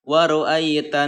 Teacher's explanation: Nah, dari bunyi huruf ta ke dalam huruf nun. Di tengahnya ada alif lam, tetapi alif lam tersebut seolah-olah tidak ada ya. Waru'aitanna gitu ya, seperti itu cara membaca alif lam samsiah dibaca idgham.